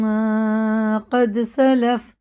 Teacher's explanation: دال میں قلقلہ ہے، ٹھیک ہے نا؟ اس کے مخرج ٹکر کھا کے الگ ہو جاتے ہیں، ٹوٹتی ہوئی آواز سنائی دیتی ہے۔ اور یہ 5 حرفوں میں صرف قلقلہ ہوتا ہے، قاف، توئے، با، جیم، دال، اور ان کے علاوہ کسی جزم والے حروف میں قلقلہ نہیں ہوگا۔